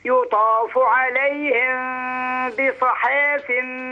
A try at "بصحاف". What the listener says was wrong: بيصي مش بيصا بيصيحا